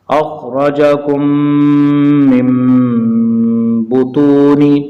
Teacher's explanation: نون ساکن کے بعد با آ جائے تو نون کی آواز کو میم سے بدل کر پڑھیں گے